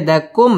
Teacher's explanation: মিম সাকিন ইজহারে খাস গুন্না ছাড়া পড়তে হবে